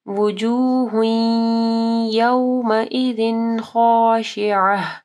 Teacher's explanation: تنوین ہے، اس کے بعد خا حروف حلقی میں سے ہے تو یہ اظہار ہوگا